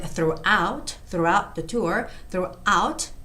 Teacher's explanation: And the word throughout the tour, throughout, the stress goes on out